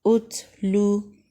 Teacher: لام کو لمبا نہیں کریں گے، صرف ایک حرکت ہے، اتلو۔ اب دال کو دیکھتے ہیں۔